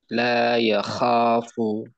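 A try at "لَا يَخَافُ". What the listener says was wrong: Tebal kho-nya. La yakhafu.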